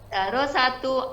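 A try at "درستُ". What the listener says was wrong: Bukan darosatu, bukan. Sanya tuh sukun, Bu. Darostu.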